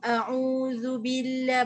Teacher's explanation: Bila baris depan muncung, a'udzubillah, baru kita dengar bunyi zu